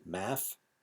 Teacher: The th sound in math is pronounced like an f, math. And some vowels sounds are, like ride are pronounced with a long ah, rod.